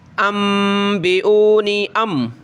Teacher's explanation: حمزہ اور میم کو میں ملا رہا ہوں آپس میں، دیکھیں نا نون نہیں پڑھ رہا · نون ساکن کے بعد با آ جائے تو وہاں میم دے دی جاتی ہے کہ آپ نے وہاں جو ہے اس نون ساکن کی جگہ آپ نے میم پڑھنی ہے اور وہاں اپنے ناک میں آواز پیدا کرنی ہے، ٹھیک ہے؟ اب ایسے سمجھو کہ یہ نون نہیں، ہم حمزہ کو میم سے ملا رہے ہیں، حمزہ میم زبر ام اس طرح پڑھیں گے، ٹھیک ہے؟